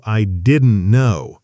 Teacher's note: Right, didn't is often pronounced almost like didn't, with the final T barely audible in casual, fast speech. I didn't know often sounds closer to I didn't know.